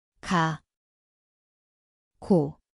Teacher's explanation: 기억, এটি গেখের মতো শোনায়। স্থান হল জিভের পেছন।